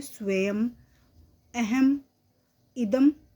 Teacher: अनुस्वार एक आश्रित नासिकीय व्यंजन है। जब ये शब्द के अंत में आता है तो म के रूप में बोला जाता है।